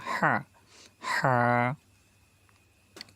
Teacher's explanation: কণ্ঠনালীর মাঝখান থেকে হা উচ্চারিত হয়, চেপে বলবো আমরা